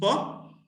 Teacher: it is voiceless it's bilabial explosive